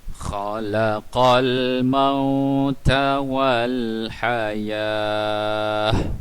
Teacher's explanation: Ta marbutah apabila berada di hujung dan kita hendak berhenti, ta marbutah akan menjadi huruf ha begini, kerana kita hendak waqaf. Ta marbutah akan berhenti menjadi huruf ha, dan kita bariskan dia dengan baris mati walaupun dia ada berbaris di atas.